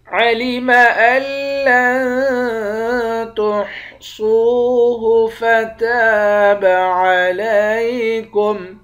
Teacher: علم ان لن تحصوه فتاب علیکم، حمزے کو تشدید والے حرف کے ساتھ ملا کر ادغام بلا غنہ کریں گے، یعنی غنے کے ساتھ نہیں پڑھیں گے۔ لام کو نون کے ساتھ ملا کر نون پر اخفا کریں گے